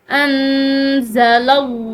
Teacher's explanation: लफ्ज़ अल्लाह की लाम पिछले हर्फ यानी कि लाम के ज़बर की वजह से जो है ये लाम मोटी पड़ी जा रही है